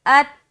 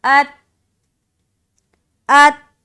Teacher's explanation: حمزہ کو جب تا سے ملائیں گے تو آواز اسٹک ہو جائے گی. یہاں پر لوٹتی ہوئی آواز نہ معلوم ہو. بعض اوقات لوگ تا میں بھی قلقلہ کر رہے ہوتے ہیں جو کہ غلط ہے.